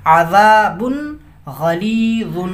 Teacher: یہاں پہ تنوین کے بعد، یہ با پہ تنوین ہے، تنوین کے بعد حروف حلقی غین ہے تو اس کو ظاہر کریں گے، اظہار کریں گے